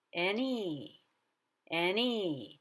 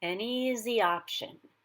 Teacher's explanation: the e in easy has a higher pitch than the n which is coming up